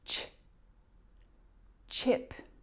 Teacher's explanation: That sound, ch, is a combination of the t and sh. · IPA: /ʧ/